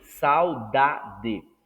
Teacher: Já na palavra saudade, o U deixa de ser vogal para ser semivogal.